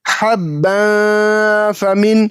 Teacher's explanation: तनवीन के बाद हुर्फ़ इख्फ़ा में से फा मौजूद है, इसलिए यहाँ पे तनवीन की आवाज़ को नाक में छुपाकर पढ़ेंगे।